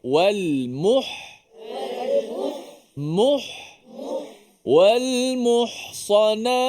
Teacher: huruf ha ni kalau mati sebelum ni baris depan agak lemah sedikit